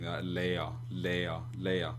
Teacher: I don't really pronounce the R. It's not like a guttural R where I say or something like that, like they would do in a language like French.